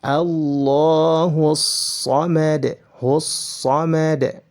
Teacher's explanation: Jika berada di pertengahan, maka hamzahnya akan hilang, tidak dibaca lagi. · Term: hamzah wasal